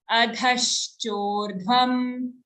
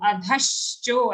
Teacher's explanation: After dha, we have a half sha joined to a cho sound. Adhashcho, and the dha has an aghat.